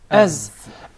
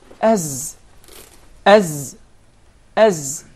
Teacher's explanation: And there is actually a whistling sound. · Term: Zay